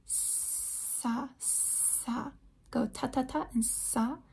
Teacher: your tongue isn't quite touching the top of the mouth there it's really close and the air is like causing friction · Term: fricative